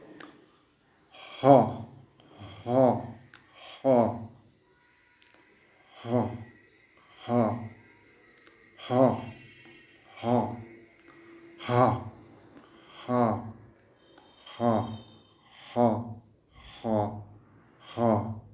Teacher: 14 নম্বরে আছে হা, হা, হা। হা এটিও গলার মধ্যখান থেকে উচ্চারণ করতে হয় এবং এক আলিফ টানতে হয়।